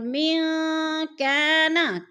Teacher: الف خالی سے پہلے کاف کے اوپر زبر ہے تو الف مدہ کو ہم نے ایک الف دو حرکات کے برابر کھینچ کر پڑھنا ہے۔